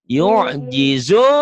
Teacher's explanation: Karena ketemu satu huruf hidup dihentikan, jadi panjangnya banyak. Jadi lima harokat. Ini panjang.